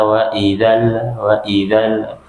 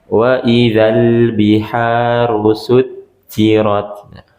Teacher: hati-hati lamnya diikatkan kembali, jangan dipantulkan